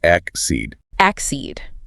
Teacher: And if you miss that stress, if you say something like accede, the word just loses all its punch. You absolutely must put the emphasis emphatically on that second syllable, the seed.